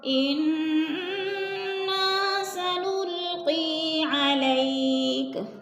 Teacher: انا کی نون مشدد ہے، غنہ کریں گے، ناک میں آواز لے جائیں گے، نا کو تھوڑا سا کھینچنا ہے، الف مدہ ہے۔